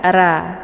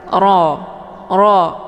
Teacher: kalau Ra itu tipis bunyinya tapi ro tebal